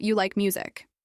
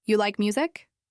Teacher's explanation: lifting her voice slightly at the end of the question. Instead of, "You like music." With a flat tone, she practiced, "You like music?" with her voice rising gently at the end.